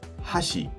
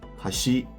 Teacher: So again chopsticks is high to low and bridge is low to high. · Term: pitch